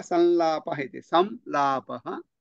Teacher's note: लकारः तत्र आगच्छति, परन्तु लकारात् पूर्वं यः अनुस्वारः श्रूयते सः अनुस्वारः किञ्चित् भिन्नः अनुस्वारः